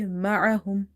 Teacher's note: it's a halkiya letter and there is a bit squeeze sound when you say ma'ahum. If you say ma'ahum, it will replace itself with hamza sound and there will be a mistake which is lahni jali, clear mistake, and it can change the meaning of Quranic words. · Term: ain